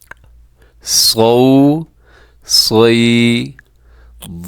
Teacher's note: صاد موٹا پڑا جائے گا، صاد کو اپنے باریک نہیں ہونے دینا ورنہ یہ سین بن جائے گا